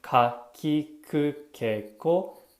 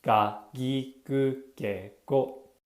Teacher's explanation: The dakten adds voicing to the consonant sound. What this means is the k sound turns into a g sound. Notice when you make the sound k and g, your mouth stays the same shape, but with g, your throat vibrates a little bit more because you're adding voice to the sound.